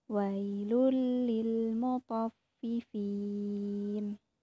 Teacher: Cara membacanya yaitu dengan memasukkan suara nun sukun atau tanwin ke dalam huruf sesudahnya, seakan-akan tidak ada nun sukun atau tanwin. Namun, idgham bila gunnah tidak boleh ditahan dan tidak boleh didengungkan ya cara membacanya.